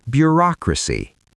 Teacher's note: The stress falls on the second syllable, bureaucracy.